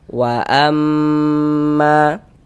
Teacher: Kemudian ma dibaca panjang. Ini namanya adalah mad jaiz munfasil.